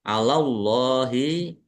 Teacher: Kemudian ro fathah berdiri mat tabi'i panjang 2 harokat. Allahi, Allahnya dibaca tebal karena harokat di depannya fathah